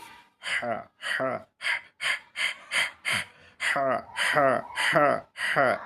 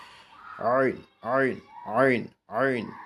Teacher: গলা শক্ত করে আওয়াজকে চাপ দিয়ে আমরা উচ্চারণ করব দুইটা হরফ এই দুইটা হরফ হলো গলার মাঝখান থেকে